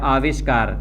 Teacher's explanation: ये दंत्य स यहाँ पर जब शब्द के योग में जुड़ेगा तो ये यहाँ पर आप देख रहे हैं मूर्धन्य वर्ण के रूप में परिवर्तित हो रहा है, स का श हो जा रहा है।